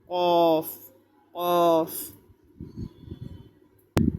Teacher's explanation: 4 নম্বর মাখরাজ, জিহ্বার গোড়া তার বরাবর উপরে তালুর সঙ্গে লাগাইয়া 2 নোক্তাওয়ালা কফ